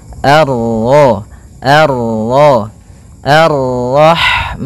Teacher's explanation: bertemu dengan huruf ra yang berharakat tasydid, maka ra-nya kita baca dengan tafkhim